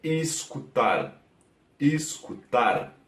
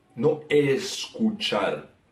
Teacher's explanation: La sílaba tónica está al final, como en español, pero a diferencia del español en el que E y el U se mantienen, en portugués el E se queda un poco más bajo, como I. Y el U se mantiene, entonces se queda como escutar, escutar, no escuchar.